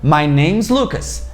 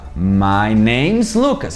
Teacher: Tem uma forma contraída para isso, que é My name's Lucas. A gente emenda esse is no name. Então fica names.